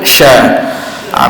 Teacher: Jadi huruf hamas, huruf shin ni ada hamas, angin yang kita akan keluar · Yang kita sebutnya huruf ni bila mana suara kita akan menjadi sedikit rendah kerana dicampur dengan nafas kita yang kita lontarkan keluar, itu hembusan.